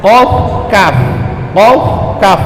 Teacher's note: Huruf qaf sama kaf dia di pangkal lidah. Ya, di atas tenggorokan nih, di atas lak-lakan, dia ujung atau di pangkal lidah.